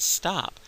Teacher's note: front of your mouth and you say the word stop you'll you'll still feel the puff of air after the P but not after the T